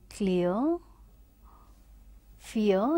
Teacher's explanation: It is starting at a strong vowel sound E and then it is going to the weaker one A, right.